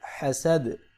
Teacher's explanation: دال پہ قلقلہ بھی ہوگا اور دال ساکن بھی ہوگا۔